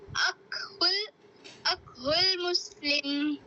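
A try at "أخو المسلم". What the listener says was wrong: अखुल नहीं कहेंगे आप, खौ को अदा करें, खौ खौ, अखुल अखुल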